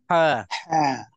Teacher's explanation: Cuba sebut ha itu dan biar kita sampai kita ada terasa sakit di tekak kita ataupun di tengah-tengah halkum kita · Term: ha pedas